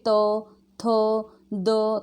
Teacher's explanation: जीभ के ऊपर की नोक द्वारा ऊपर के दांतों का स्पर्श करने से उच्चारित होते हैं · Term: दंत्य